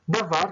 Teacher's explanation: a sílaba forte é a segunda, é var, e não dá. A ênfase está no var. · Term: sílaba tônica